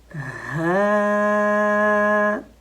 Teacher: حرف ہاں کو ہمیشہ باریک پڑھا جاتا ہے